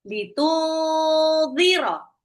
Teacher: Litudhiro, ingat nun sukun ketemu dal ikfa, jadi nggak boleh dibaca n-nya nggak boleh kejelas ya, harus samar, nunnya kayak mau lompat ke zal, zal itu ujung lidah seperti mau digigit